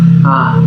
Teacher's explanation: Nanti akan 10 huruf misalnya huruf jauf ya enggak boleh masuk hidung dia